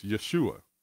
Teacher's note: The Hebrew word for salvation is Yeshua, with the emphasis on the last syllable. The Messiah's name is Yeshua, with the emphasis on the U, which is pronounced U, as in the word soon.